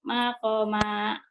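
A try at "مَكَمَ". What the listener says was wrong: Ma-nya pendek, Bu. Ma-nya pendek. Makoma.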